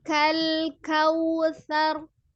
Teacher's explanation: Jadi ketika itu monyongkan dulu untuk kedua bibir ketika waw sukun ya.